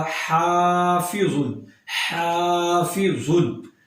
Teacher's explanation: یہاں پر ہا کو لمبا کریں گے کیونکہ یہاں پر الف مدہ بن جاتا ہے